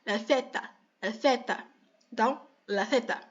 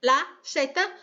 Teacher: E como é que a gente pronuncia o TH do inglês? A gente pega a língua e tenta fazer um som de S com a língua entre os dentes superiores e os inferiores. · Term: THzinho